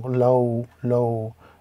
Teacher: lam with the fatha, waw with the sukoon. Again, this creates a diphthong